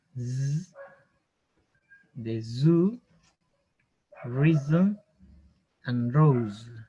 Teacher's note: La z, como una abeja, z, de zoo, reason, and rose. Sonido parecido a la S, pero vibra como una abeja, les había dicho, como un zumbido.